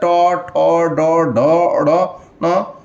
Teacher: इस सब में जीभ को ऐसे उलटना पड़ता है, यानी तालु में टच करता है, इसे मूर्धा कहते हैं। तो ये मूर्धा ट वर्ग।